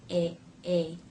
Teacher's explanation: To make this first sound, the tongue will push forward and press behind the bottom front teeth. A. The front part will be wide. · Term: A as in say diphthong